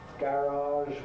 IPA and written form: ˈgærɑːʒ (Garage)